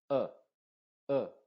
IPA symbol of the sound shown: ʌ